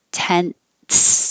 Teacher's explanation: But I was representing where your tongue is going, because when you say tense, when your tongue goes from the N to the S, it releases a little bit of air like a T.